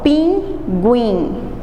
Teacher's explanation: Eu tenho uma semivogal, U, mais uma vogal. Semivogal mais uma vogal. O U como semivogal e o I como vogal.